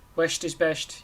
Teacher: a Mayo accent is hilarious because it's like pronouncing the S, like West. Everything ends in an esht or something like that.